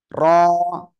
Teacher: সবাই মোটা আওয়াজে পড়বেন মোটা আওয়াজে এক আলিফ টান হবে